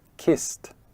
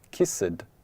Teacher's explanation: kiss, which ends with s sound, another unvoiced sound. So the past tense is kissed. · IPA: /kist/